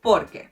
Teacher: Por que Estoy ansiosa por que terminemos el proyecto a tiempo. Lastly, you do emphasize the por a bit, but you do not separate the sounds: por que. So porque and por que have basically the same pronunciation.